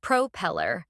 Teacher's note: notice how the stress is on the second syllable